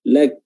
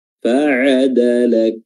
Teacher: hams pada huruf kaf kita keluarkan ketika huruf kafnya sudah selesai sukun